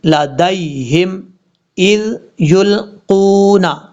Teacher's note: ذال کو بغیر سیٹی سے پڑھیں گے